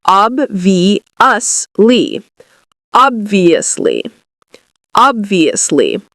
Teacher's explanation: So we put the stress on the first part, ob, and then we have the V, ob-vi.